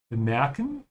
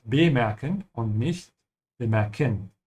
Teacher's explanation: the E in the middle should be stretched